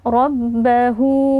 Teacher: ro tafkhim atau tebal ya dibaca dengan kita mengangkat pangkal lidah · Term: ra tafkhim